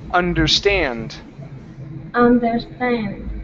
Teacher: Our stress is on the end of the word.